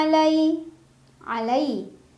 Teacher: Ada harf lin karena ada ya sukun sebelumnya fathah, dibacanya cukup dilunakan atau dilembutkan saja.